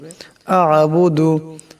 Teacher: আ'বুদু, এখানে আইন সাকিন, আইনের আওয়াজটাকে গলা থেকে চাপ দিয়ে বাইর করতে হবে